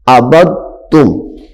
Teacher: اب دال ظاہر نہیں کریں گے ہم